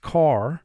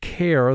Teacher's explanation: We have an E at the end of the word, so AR does not form a team. The word is not pronounced car. The word is pronounced care. The A is long. The E is silent.